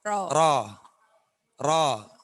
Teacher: rok itu cuma dua getaran secara teori